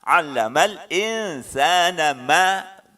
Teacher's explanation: nun matinya disamarkan. Ya, lidahnya tidak nempel, ya, renggang.